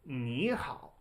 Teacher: But Chinese there is no such thing as 2 third tones in Chinese. Whenever you have 2 third tones in a row, they're still written this way, but you pronounce the first one as a second tone.